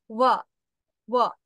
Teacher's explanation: নিচের ওষ্ঠটা উপরের পাটির যে দাঁত আছে, যে বড় বড় দুটো দাঁত, ওই যে খরগোশের মতো, ওখান থেকে উচ্চারিত হবে, হালকা করে টাচ করে চলে আসবে নিচের ঠোঁটটা, ওয়া। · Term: অন্তস্থ ব